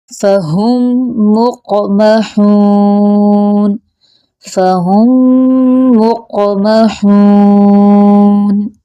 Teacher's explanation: ہا کی آواز حلق کے درمیان والے حصے سے نکلتی محسوس ہو۔ فہم مقمحون، فہم مقمحون۔